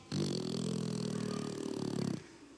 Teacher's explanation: you're sticking the tongue out of your mouth over your bottom lip, and you're doing a trill. Don't try to tuck your bottom lip underneath like this. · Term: raspberries